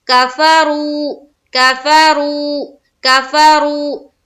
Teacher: پیش واو مدہ کا قاعدہ ایک الف کے باقدر کھینچنا ہے، یعنی کہ لمبا کرنا ہے۔ کفرو، کفرو، کفرو، کھینچیں گے جب ایک الف کے باقدر جب کھینچنا ہے تو ہم را کو پر کرتے ہوئے کھینچیں گے۔